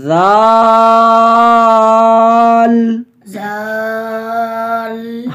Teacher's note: اس میں سیٹی کی آواز بھی نہ ہو، زا کی آواز نہ ہو، زبان کی نوک سامنے والے دانتوں کے ساتھ لگے گی